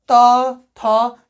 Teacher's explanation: जब त थ बोलोगे ना तो दांत से टच होगा, क्या, जीभ, ठीक है, तो ये क्या हो गया, दंत हो गया।